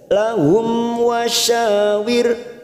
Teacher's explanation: mim sukun bertemu wau namanya bacaan idhar syafawi kita baca jelas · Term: idhar safawi